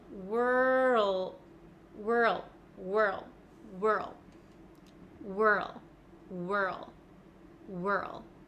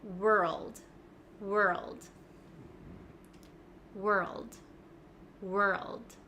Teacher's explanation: I can feel my tongue sliding from the back to the front so from R to L